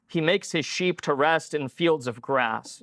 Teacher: you've got makes and sheep and rest and fields and grass all lining up with the accented syllables